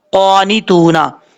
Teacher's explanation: قاف حروف مصطلح میں سے پر پڑھا جائے گا، الف ہے آگے، ایک الف کی مقدار لمبا کریں گے. جب وقف کریں گے تو نون ساکن ہو جائے گا.